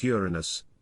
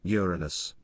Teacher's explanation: people stress the second syllable turning it into the unfortunate Uranus it's actually meant to be pronounced with the emphasis on the first syllable